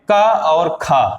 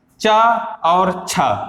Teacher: जिन वर्णों के उच्चारण में हमारे स्वर तंत्र में कंपन न उत्पन्न हो, उन्हें हम अघोष वर्ण कहते हैं या अघोष व्यंजन कहते हैं।